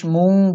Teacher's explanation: নুন সাকিনের পরে কাফ আসছে ইখফা গুন্না